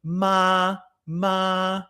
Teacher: The first tone is a midflat level tone, and there's no symbol for it.